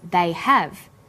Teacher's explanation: Because stressed the auxiliary verb have, the H sound is pronounced.